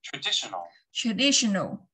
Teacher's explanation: trọng âm sẽ rơi vào âm thứ hai